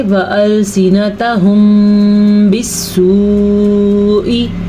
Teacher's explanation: ایسے دونوں ہونٹ بند ہو جاتے ہیں، غنّے کی کیفیت پیدا ہو جاتی ہے، اسی کو اخفاء شفوی کہتے ہیں۔ بالسوء، یہ مد جو آپ کو اپنے سامنے نظر آ رہی ہے، یہ 5 سیکنڈ تک آپ نے لمبی کرنی ہے، ٹھیک ہے.